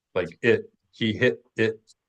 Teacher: drop the T at the end of words or we pronounce it as a glottal stop